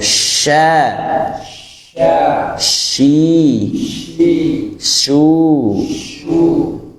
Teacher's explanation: Tengah lidah yang dinaikkan ke langit langit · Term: huruf syin